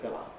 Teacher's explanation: Londoners don’t necessarily distinguish then between a <pillow> [ˈpɪləʊ] that you sleep on and a <pillar> [ˈpɪlə], a column.